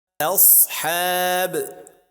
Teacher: Please don't emphasize the sound of ha after Saad